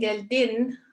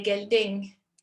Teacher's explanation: Instead of saying geldin, which would end with an N, Cypriots would say gelding, which is more like an ing ending at the end.